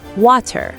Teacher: in British English, they might say water with a clear t sound, but in American English, we say water.